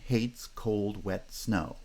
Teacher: each of those feet are monosyllabic feet each therefore gets stress